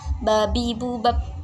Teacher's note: Nah, yang saya akan praktekkan yaitu adalah huruf ba. Nah, ba ini keluarnya di bibir sebelah atas dan bawah dan dirapatkan